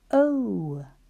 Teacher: my teeth are on my bottom lip for v, and there is a vibration. O is O when it's at the end of a syllable or all on its own.